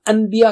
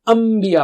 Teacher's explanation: ان کہنے کے بعد جیسے ہی آپ با نکالنے کے لیے ہونٹ ملائیں گے تو خود بخود ہی میم کی آواز آئے گی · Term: اقلاب